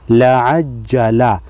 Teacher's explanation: یہاں پر جیم مشدد ہے، جیم کو پہلے عین کے ساتھ اور دوسری مرتبہ خود حرکت کے ساتھ پڑھیں گے، اس پر زبر ہے۔